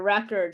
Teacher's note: the stress in the first position the first syllable